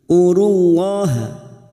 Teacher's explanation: lam jalalah, kita baca tafkhim karena sebelumnya ada harokat dhammah